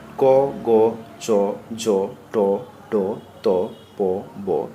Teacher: প্রাণ অর্থাৎ প্রাণবায়ু অল্প লাগে তাই এরা অল্পপ্রাণ বর্ণ